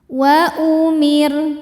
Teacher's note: Selanjutnya di atasnya ada al-waqfu aula, artinya berhenti lebih utama. Wa umir, ro-nya dibaca tarqiq karena didahului harokat kasrah, maka ro-nya tipis.